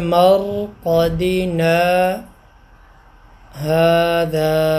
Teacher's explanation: ابھی میں تھوڑی دیر رکا ہوں، سانس میں نے نہیں توڑی، صرف آواز کو میں نے روکا ہے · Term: سکتہ